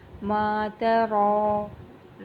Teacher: را کے اوپر کھڑی زبر ہے، اس کو ہم نے پورا ادا کرنا ہے اور اس کو ایک الف کے برابر کھینچ کے ادا کریں گے